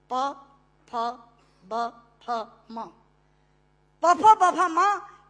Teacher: पूरा अल्फाबेट हिंदी का जो पवर्ग है वो ओष्ठांग है, प फ ब फ म, प फ ब फ म, दोनों होंठ मिलाकर बोले जा सकते हैं